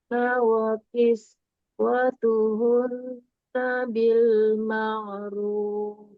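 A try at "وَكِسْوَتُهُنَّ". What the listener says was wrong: Diulang, wa kiswatuhun, kunnya kurang ditahan, kurang sama dengan yang sebelumnya.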